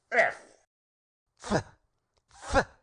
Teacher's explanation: the F by pressing the upper teeth against the lower lip